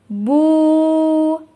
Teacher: Вау өзүнөн мурда домма келсе, домманы созот.